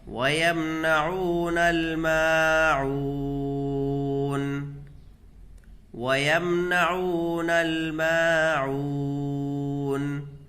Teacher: وَيَمْنَعُونَ الْمَاعُونَ، وَيَمْنَعُونَ الْمَاعُونَ، دیکھیے یہاں پر واو مدہ ہوگا، واو ساکن سے پہلے عین کے اوپر پیش ہے تو اس کو کھینچ کر کے پڑھیں گے۔ میم کو بھی کھینچ کر کے پڑھیں گے، الف مدہ ہوگا، عین کو کھینچ کر کے پڑھیں گے، واو مدہ ہوگا۔